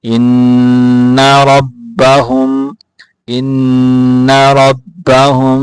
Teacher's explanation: ان کو کھینچ کے نہیں پڑھنا، غنہ کرنا ہے، کھینچ کے نہیں پڑھنا